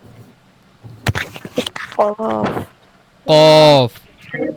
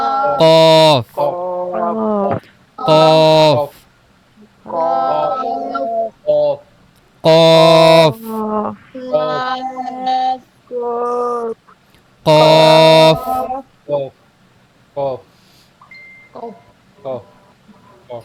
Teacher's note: এটা খেয়াল করবেন, জিহ্বার যে গোড়ার অংশ এটা উপরের তালুতে সরাসরি লাগবে। জিহ্বার গোড়া তার বরাবর, অর্থাৎ জিহ্বার গোড়ার বরাবর উপরের তালুর সঙ্গে লাগিয়ে উচ্চারিত হয় কফ।